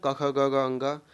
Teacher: कंठ से उत्पन्न होने वाले वर्ण